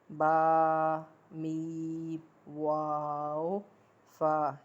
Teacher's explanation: یہ چاروں حروف ہونٹوں سے ادا ہوتے ہیں